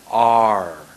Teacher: My tongue goes up at the very last moment.